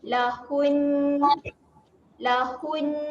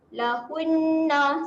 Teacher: Kalau nak berhenti dekat sini, nak wakaf, kita matikan bunyi tu dengan bunyi huruf nun, tapi kita doublekan bunyi dia. Nun tu 2 kali lah.